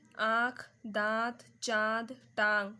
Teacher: जिन वर्णों के उच्चारण में हवा नाक और मुंह दोनों से बाहर निकलती है उन्हें हम अनुनासिक कहते हैं